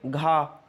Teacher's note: घा का वर्ग का अक्षर है और का वर्ग कंठ से बोला जाता है